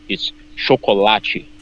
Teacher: You can have a half strong syllable in the beginning, choco, but the strongest syllable is chocolate.